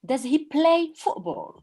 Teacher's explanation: in the question, play should be more emphasized